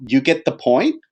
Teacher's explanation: you would just say um you get the point with a rising intonation